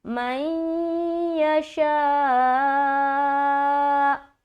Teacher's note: یہاں نون ساکین کے بعد یا ہے تو یہاں پر ادغام کا قاعدہ ہو رہا ہے، اور ادغام کی میں نے 2 قسمیں بتائی ہے، تو یہاں پر ادغام ناقص یعنی کہ غنے کے ساتھ والا ادغام کرنا ہے۔